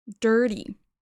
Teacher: Alors là, je le prononce à l'américaine. Le T, pour moi, se transforme en D. Dirty. Mais si vous voulez le prononcer plus à la britannique, ou il y a plein d'autres variations, mais voilà, on peut dire dirty.